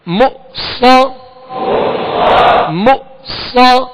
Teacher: صاد حروف مستعلیہ ہے، اس میں سیٹی کی آواز ہوگی